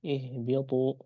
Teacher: Huruf H di pangkal tenggorokan, huruf ba di bibir ya, begitu. Jadi sangat jauh sekali dan masuk ke mutabaidain.